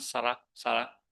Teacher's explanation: The Thai R is very light. The tongue doesn't jump up to the top of the mouth. It just sits around.